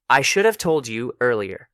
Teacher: In fast speech, should have becomes shoulda. So you actually hear, I should have told you earlier.